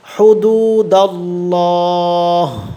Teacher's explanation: হুদু, দাল্লাম জবর দাল্লাম খারা জবল্লা, আল্লাহ শব্দের লামটা কিন্তু পুর হবে, এখানে মোটা হবে